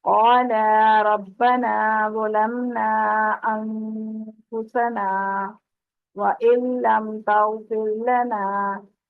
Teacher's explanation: تو انفسنا پہ ہم نے وقت کیا ہے، آواز روکی ہے لیکن سانس نہیں توڑی، تو اس چیز کا یہاں پر خیال کرنا، سکتہ کی جگہ پر آواز روکنی ہے، سانس نہیں توڑنی۔